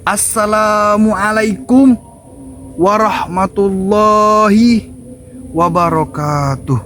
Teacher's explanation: yang awalnya tinggi diakhiri nada rendah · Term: intonasi